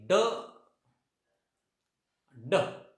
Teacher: this sound is voiced because there is vibration. आवाज बाहेर येतो आणि इथं व्हायब्रेशन पण होतं, त्यामुळे याला काय म्हणायचं, व्हॉइस्ड साऊंड म्हणायचं.